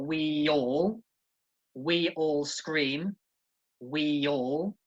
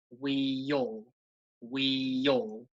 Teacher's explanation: You'll notice there's a bit of a Y sound in the middle there. We all. Okay, it's like there's a Y in the middle of those two words, the we and the all.